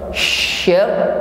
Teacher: Idza sama'u syab, syab huruf shin disertai dengan sifat tafashi, jadi tekanan udaranya lebih tampak daripada sin. Bukan sekedar usakot, tetapi syakot.